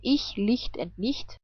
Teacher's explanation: If you remember, I told you that CH can also be pronounced like hi, but without voice